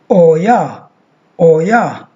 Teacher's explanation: Oi, diphthong, plus schwa to get the sound triphthong